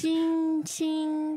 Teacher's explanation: it's high it's kind of Airy and floaty if not even Fairy like I think it has musical qualities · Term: first tone